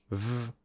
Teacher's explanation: Another example is v, which is made by putting our upper teeth and lower lip together